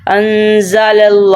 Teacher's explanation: پہلے لام سے پہلے جو ہے حروف ہے زبر والا ہے، تو اس لیے ہم نے لام کو موٹا ادا کرنا ہے